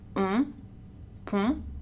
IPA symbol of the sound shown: õ